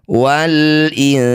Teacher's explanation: Karena dihentikan maka huruf terakhir sin ini kasrahnya tidak usah dibunyikan. Wal ins. Nah, jadi hanya tersisa sifat hames ya atau memercikkan udara.